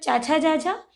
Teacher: ये निकलते हैं हमारे मुख के उस गहरे भाग से, उसको कहते हैं तालु। तो ये तालु वर्ग के अक्षर हैं।